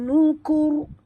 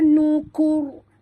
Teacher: Ra yang kita matikan ini hendaklah dibaca tebal, kena mengikut huruf sebelumnya berbaris depan